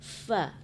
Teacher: Pengucapan huruf fa itu ada hamasnya, ada anginnya, angin berhembus. Fa di kedua bibir, ya kan?